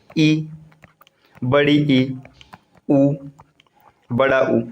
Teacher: सवृंत में मुख द्वार एकदम ही कम खुला रहता है